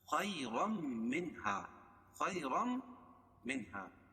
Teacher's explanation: تنوین کے بعد ادغام مع الغنہ کے 4 حرفوں میں سے میم ہے تو اس میں غنہ ہوگا. منہا نون ساکن کے بعد حروف حلقی کے 6 حرفوں میں سے ہا ہے، اس میں اظہار حلقی ہوگا، اس کو ظاہر کر کے پڑھیں گے بلا غنہ کے.